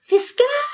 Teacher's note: viu que esse cal se prolongou quando se prolonga é a sílaba tônica